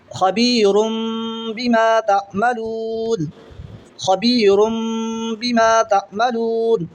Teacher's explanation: दो पेश की तनवीन के बाद में बा आ रहा है तो नून की आवाज़ को मीम से बदल कर पढ़ेंगे, गुन्ना के साथ पढ़ेंगे। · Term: इक़लाब